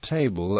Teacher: the syllabic L in the English word table